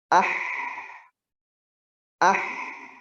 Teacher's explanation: Huruf ha dari tengah tenggorokan.